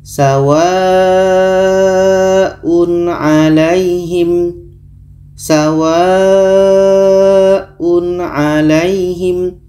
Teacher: tanwin dibaca jelas, a dibaca jelas dan tidak dengung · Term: izhar